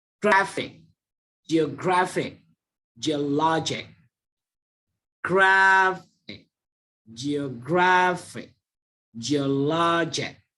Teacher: Ini kamu perhatikan yang ditekankan itu adalah suku kata kedua terakhir. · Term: stress on penultimate syllable